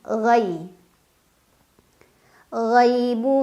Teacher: ada Ya Sukun sebelumnya fathha dibacanya cukup dilunakkan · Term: harf Lin